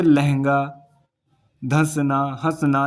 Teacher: जैसे ही आप इनका उच्चारण करोगे तो आपको लगेगा कि नाक और मुख दोनों से इसमें वायु निकलती है, तो इसलिए इन्हें बोलते हैं अनुनासिक।